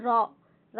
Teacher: এই কম্পনজাত বা রণিত ধ্বনি হলো জিহ্বার কম্পনজাত এবং রণিত ধ্বনি হচ্ছে র। এই র উচ্চারণ করার সময় আমাদের একটু হলেও জিহ্বার অগ্রভাগ কিন্তু কম্পিত হয়